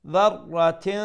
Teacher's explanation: the tanween would be pronounced with ikhfa